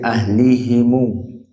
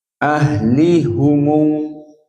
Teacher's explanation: Ahlihumu, not said ahlihimu. Jumhur with kasratil ha, but hamzah zayat with domatil ha